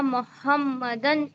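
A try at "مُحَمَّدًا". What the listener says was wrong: ہاں محمدن کو اور تھوڑا کریکٹ کیجئے, محمدن. میم کی جب پروننسیشن آپ کر رہے ہیں میم کے اوپر پیش ہے تو اپنے ہونٹ کو گول کرنا ہے, محمد.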